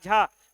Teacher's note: झा बोलते समय हमारी वायु की मात्रा ज्यादा होगी